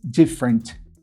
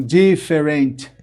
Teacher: Nesse caso, a primeira vogal da segunda sílaba não é pronunciada